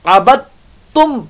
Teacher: वाला आना आबिदुम मा, यहां पर इदगाम माल गुन्ना का कहना, आबिदुम मा अबदतुम, ये बा जो है ये ता के साथ जाकर मिल जाएगा और ये साकिन हरफ बीच में से खत्म हो जाएगा